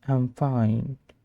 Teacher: Flat tone. Maybe annoyed, tired.